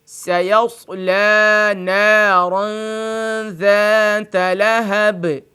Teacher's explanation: سیصلی میں جو لام کھڑی زبر ہے اس کو بھی کھینچ کے پڑھیں گے